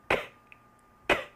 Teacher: If you say the K and you place your fingers here on your vocal cords, you will feel no movement and hear no sound coming from here. Everything is coming from your mouth.